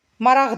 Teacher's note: bu tipli sözlərin sonunda işlənən q samiti adi vəziyyətdə x kimi tələffüz olunur